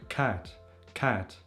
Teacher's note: It's the ash vowel. It's called ash. It's between a and e.